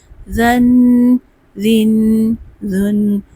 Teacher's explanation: اس میں سیٹی کی آواز نہیں ہوگی اور نرمی سے پڑھیں گے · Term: زال